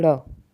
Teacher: हमारी जीभ फोल्ड हो रही है, फिर बाहर को झटका सा मार रही है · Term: उत्क्षिप्त व्यंजन